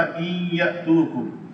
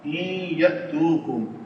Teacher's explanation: نون ساکن کے بعد یرملون میں سے یا آ رہا ہے تو یہ ادغام ہوگا یہاں پہ، اس کی وجہ سے یہاں پہ شد آ جائے گی